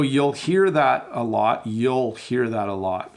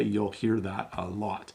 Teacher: you'll hear that a lot we do say the L like we do hit that L fairly hard